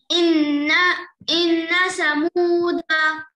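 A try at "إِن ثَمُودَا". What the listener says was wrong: کی زبان باہر نہیں نکالے, سین پڑھ رہے ہیں آپ, سا پڑھیے, سا ہے وہ. سا زبان باہر نکالیے, سا. سمودا, اس طرح رہیں گا مگر پڑھیں گے اس کو اس طرح. ان سمودا.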